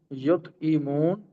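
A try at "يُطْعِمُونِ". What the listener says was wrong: ताआम से है, इताम, तात नहीं है, ये ताआम है, ता ऐन मीम आपको नजर आ रही है ना, तो ये ताम से है,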